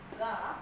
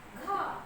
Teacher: ಗ ಅಲ್ಪಪ್ರಾಣ ಘ ಮಹಾಪ್ರಾಣ